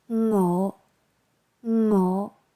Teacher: Tone 5, rising, low to mid-pitched.